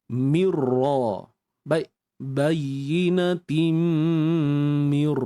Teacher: kena masukkan tanwin ke dalam mim dengan masuk yang sempurna binatim dengung pun dengung yang sempurna ya Mir baik bayinatim Mir